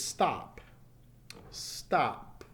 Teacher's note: So that's a P at the end, which is a voiceless sound.